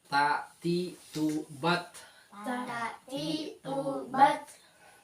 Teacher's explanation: ada hamsnya ada suara napas yang keluar terus